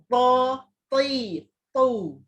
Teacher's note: Sifat huruf sod, dot, to, za ni ada nama sifatnya isti'la, maksudnya belakang lidah kena terangkat, diangkat, dan ada satu lagi sifat itba'. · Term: huruf to